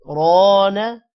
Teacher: را موٹا ہوگا اور الف ہے لمبا کریں گے، نا کو لمبا نہیں کرنا